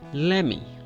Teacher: The let me is ending at T, let. So we skip the T sound while we're going to say me